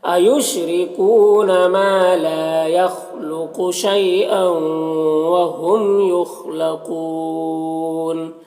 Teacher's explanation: با میں الف مدہ ہے، لا میں بھی الف مدہ ہے. یخلق خا حروف مستعلیہ میں سے پر پڑھیں گے، قاف بھی حروف مستعلیہ میں سے. شی میں یا لینے سے نرم آواز کے ساتھ جد پڑھیں گے.